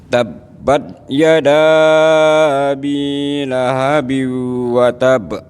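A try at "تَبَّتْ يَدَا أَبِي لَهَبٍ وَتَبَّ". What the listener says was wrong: Baknya agak ditahan Pak. Tab. Watab.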